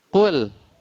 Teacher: Di sinilah wajib tipis, tidak boleh atau wajib lemah. Kul, tidak boleh kita tebalkan terpengaruh dengan huruf qaf